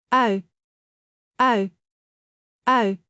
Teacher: It moves from, 'ah' to a soft, rounded 'you'. You do not stop in between. It flows smoothly as one sound. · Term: glide